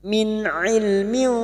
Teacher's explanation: maka bunyi nun sukun dibaca jelas tanpa mendengung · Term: izhar halq